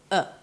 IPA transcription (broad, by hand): ə